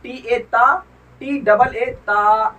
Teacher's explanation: ता भी एक अलिफ के बराबर खींच के पढ़ा जाएगा